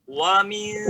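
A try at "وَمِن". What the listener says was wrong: Wa-nya jangan lama, Pak ya. Wa min langsung. Wa min.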